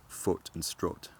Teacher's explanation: the words foot and strut actually start to rhyme